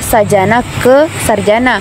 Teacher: bahasa sanskirta sajana perubahan itu terjadi karena adanya bunyi J ganda bunyi J yang pertama diubah menjadi Bunyi R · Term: disimilasi fonemis